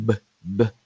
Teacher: cuando yo pronuncio la b b b hay una vibración de las cuerdas vocales entonces por eso el sonido que representa la B es un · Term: sonido sonoro